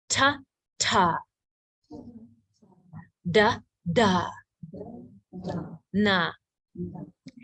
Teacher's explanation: dental, where the tongue touches the teeth